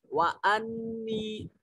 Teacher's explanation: وانی نون مشدد ہے غنہ واجب ہوگا